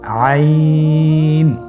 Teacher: হরফটি কন্ঠনালীর মধ্যখান থেকে উচ্চারিত হয়